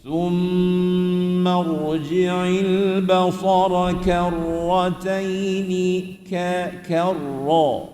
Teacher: Ya, huruf kaf nipis. Huruf sad ra tebal, kaf nipis, ra tebal balik.